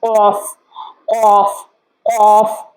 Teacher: جب زبان کو اوپر قوے کے ساتھ ٹچ کریں گے تو یہ ہماری زبان جو ہے وہ اس کی ادائیگی لفظ کی ادائیگی ذرا موٹی ہوگی